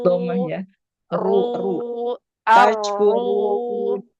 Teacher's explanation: ro-nya dibaca tafhim karena berharokat dhamma